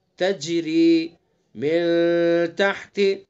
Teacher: تج جیم ہے، حروف قلقلہ میں سے ہے تو اس لیے اس کے اندر قلقلہ کریں گے